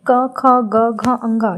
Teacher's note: इसकी आवाज़ कंठ से, गले से निकलती है, इसीलिए इसको कंठ बोला जाता है।